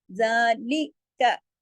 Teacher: जाल के ऊपर खड़ी जबर है जो कि एक अलिफ के बराबर खींचेगी। जालिका, लाम जर ली, काफ जबर का, ली का, ये ज्यादा नहीं खींचेगा।